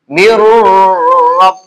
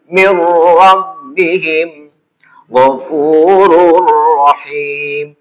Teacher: Nun mati menghadapi ro. Itu nunnya dianggap hilang, masuk ke ro. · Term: idgham bila gunah